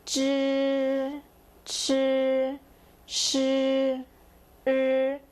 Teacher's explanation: These are grouped together because they all have the kind of R sound tagging along